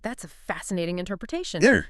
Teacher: The emphasis on fascinating can subtly signal, okay, I hear you, but let's maybe not go down that rabbit hole.